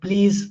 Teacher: La is actually a voiced sound, but since pa is a voiceless sound and this la comes near pa or after pa, so it becomes devoiced.